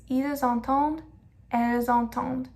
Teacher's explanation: We pronounce the S at the end of ils and elles just because entend comes right after it. It's ils entendent, elles entendent.